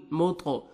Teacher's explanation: طا حروف قلقلہ میں سے ہے، ڈبل ساؤنڈ آئے گا